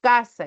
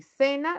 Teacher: casa con la velar K cena con la interdental